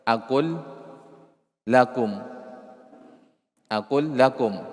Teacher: kalau lam itu berada sebelum huruf lam atau huruf ra, maka udghimat, dibaca idgham. Nah, contohnya di atas tadi, aqul lakum, aqul lakum.